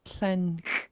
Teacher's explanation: And then you snap your teeth on it to make it sharper sounding. And so you're basically squeezing out the air, ejecting the air out of your mouth only. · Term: pinched X